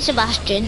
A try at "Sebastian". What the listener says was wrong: Sebastian, not Bastion.